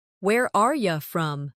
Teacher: In fast speech, are you often sounds like are ya.